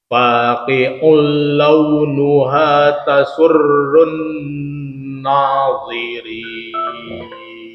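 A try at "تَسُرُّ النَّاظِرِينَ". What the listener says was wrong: Na tipis, tasurrun nadhirin. Ya, tadi tebal nunnya. Tadi nadhi ya, tapi di sini tipis kan. Nadhi. Nunnya tipis, dha-nya tebal.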